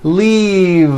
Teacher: keep the voicing going throughout the whole word and voice the v leave like that if you stop the voicing at the end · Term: voiced v